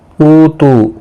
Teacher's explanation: او واو مدہ ہے، تو بھی واو مدہ ہے، ایک الف کی مقدار کے برابر کھینچ کر پڑھیں گے